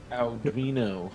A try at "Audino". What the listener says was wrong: God, you almost made me say it, because you always do that ow syllable, which it does not have. Audino.